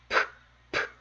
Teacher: 입술이 공기를 막았다가 터뜨리면서 나는 소리입니다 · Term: 자음